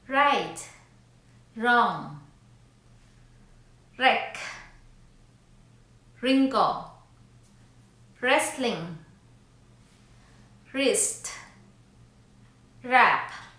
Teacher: Silent letter W. The letter W is not pronounced at the beginning of a word when the letter R follows.